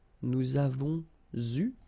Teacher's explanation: So, j'ai eu, tu as eu, il a eu, elle a eu, nous avons eu. Okay, so here you can see that we make double liaison